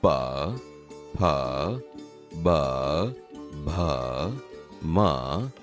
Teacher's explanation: અહીં તમે પ, ફ, બ, ભ, મ બોલાયેલ સાંભળ્યું ને? તે બોલતી વખતે હોઠ એકબીજાને અડે છે, તેથી આ ઓષ્ઠ્ય વ્યંજન છે